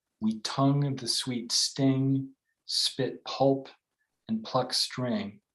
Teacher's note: more intensity and then you've got a 10 syllable line but it breaks away from meter entirely and it's got arguably three spondees where you've got two little phrases that have the equal stress and it slows things